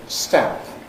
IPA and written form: stæmp (stamp)